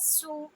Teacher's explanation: سیٹی کی آواز کے ساتھ سو، صرف ایک حرکہ جتنی آواز ، یعنی 1 سیکنڈ، اس سے زیادہ ہم نے اسے لمبی